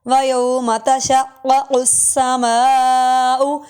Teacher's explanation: دونوں قاف ہے اور دونوں موٹے قاف ہیں، اس لیے آواز کو پر کر کے پڑھیں گے، یعنی موٹا کر کے پڑھیں گے.